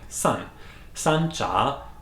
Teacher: So in that case, the Chinese would say Sancha, so San is like fourth tone, falling, San. Sancha, falling and rising tone, means loose tea